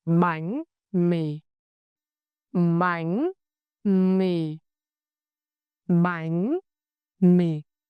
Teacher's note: apply the raising sắc tone on bánh, and the low falling tone huyền on mì.